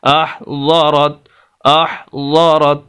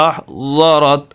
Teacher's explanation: ज़ाद को जो अदा करने का जो मखरज है इसका हमारी ज़ुबान की दाईं तरफ या बाईं तरफ, इसको हमने दाईं तरफ दाढ़ों के साथ या बाईं तरफ दाढ़ों के साथ लगाना है, तो इसका मखरज जो सही तौर पर अदा हो सकता है।